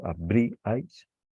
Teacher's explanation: en lugar de recaer el acento sobre la vocal abierta, recae sobre la cerrada primera, y por lo tanto se rompe, no hay triptongo, se separan las sílabas · Como el acento fonético recae sobre una vocal cerrada, ya no se considera que hay un triptongo.